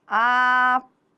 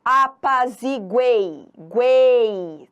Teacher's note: tritongo oral, aquele em que o som sai todo pela boca